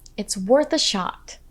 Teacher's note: remember to emphasize the words worth and shot. So you say, "It's worth a shot." Also, notice how we link the words worth and a.